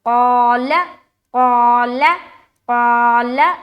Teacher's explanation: قا کو منہ بھر کر بولیں گے کیونکہ قاف موٹے حروف میں سے ہے اور اس کے ساتھ الف لگ کر آ رہا ہے، یعنی کہ الف مدہ کرنا ہے۔